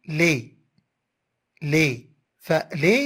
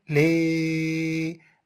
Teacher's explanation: ما معنى مقطع صوتي مفتوح؟ يعني أن الصوت ينساب ليس هناك حرف يوقفه